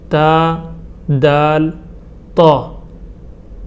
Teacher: تا، دال، طا، ان کا مخرج یہ ہے کہ زبان کی نوک کو اوپر کے سامنے والے 2 دانتوں کے جڑ میں لگانے سے ان تینوں حرف کا مخرج ادا ہو جاتا ہے